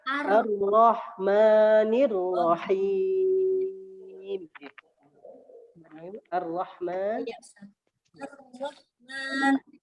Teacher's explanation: Ma-nya kepanjangan Bu. Jadi cukup dua ketukan, dua harokat.